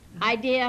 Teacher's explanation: it is pronounced three syllables i d do not say idear idea has the three syllables and not have the r on the end